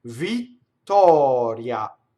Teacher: So double T, open O, flipped R, semivowel A.